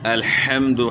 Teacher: ح کی آواز گلے کے درمیان سے نکالنی ہے